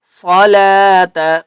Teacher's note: نصلاۃ، صاد کو بھی ہم نے پر کر کے پڑھنا ہے، ٹھیک ہے۔ صلاۃ، لام کے اوپر کھڑا زبر ہے، اس لیے ہم نے لام کو ایک الف کی مقدار کھینچ کر پڑھیں گے